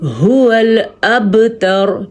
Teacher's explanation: با پہ کلکلا ہو رہا ہے